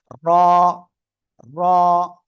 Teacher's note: জিহ্বার আগার পিঠ উপরে তালুর সাথে লাগবে, লেগে উচ্চারণ করবে